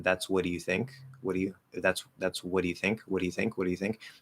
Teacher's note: even if I'm trying not to add a vowel after that flap, it just goes straight from the flap to the Y, it's gonna sound like what do you, and now it sounds like broken grammar.